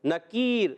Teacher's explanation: نکیر میں یا مدہ بھی ہے اور وف کرنے میں مد عارض بھی ہو جائے گا، اور یہ را ساکن ہوگی تو را باریک رہے گی کیونکہ اس سے پہلے یا ساکنہ موجود ہے